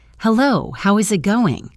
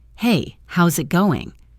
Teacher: The two words how is have melted together to become how's. The eyes has almost vanished and the final G sound in the word going often becomes softer, almost silent. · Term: connected speech